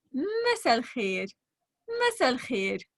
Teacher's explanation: you just skip the last part, which is the hamza or the glottal stop